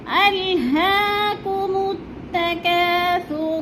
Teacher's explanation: ہا کے اوپر کھڑی زبر ہے، تھوڑا سا ہم نے اس کو کھینچنا ہے۔